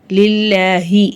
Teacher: அல்லாஹ் என்ற வார்த்தைக்கு கீழ ஜேர் இருக்கு அல்லாஹ்ன்ற வார்த்தையை நம்ம லைட்டா ஓதணும்